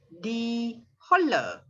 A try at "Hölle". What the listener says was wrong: Hölle. The umlaut, If Holle is without the umlaut, Hölle, you're right. But because of the umlaut, must say Hölle.